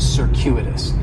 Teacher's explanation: c is going to have more of an S sound circuitous the stress is going to be on that second syllable